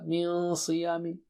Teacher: صا بہت موٹا اونچا ہے تو نون ساکنہ بھی موٹا اونچا ہو جائے گا